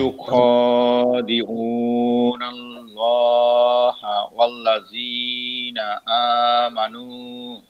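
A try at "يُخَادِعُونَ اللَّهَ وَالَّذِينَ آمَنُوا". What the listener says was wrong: মাশাআল্লাহ, সুন্দর। এই যে বুঝে বুঝে পড়তে পারতেছেন, মাশাআল্লাহ।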